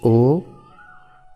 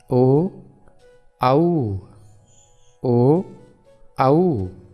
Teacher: ओ कंठ तो है ही लेकिन होठ भी थोड़े से सिकुड़ते हैं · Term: कंठ होष वर्ण